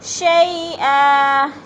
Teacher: شی پہ یا لین ہے، یا لین کو لمبا بھی نہیں کرنا اور جھٹکا بھی نہیں دینا۔ شیئا ولا، او پہ ادغام اور لا پہ الف مدہ۔